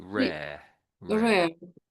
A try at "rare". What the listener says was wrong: you did it twice, two different ways there. Your last one, you didn't put too much emphasis on the second R.